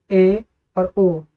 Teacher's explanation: जब हम इनका उच्चारण करते हैं तो हमारे जो मुख होते हैं समृत स्वर से थोड़ा अधिक खुलते हैं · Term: अर्ध समृत स्वर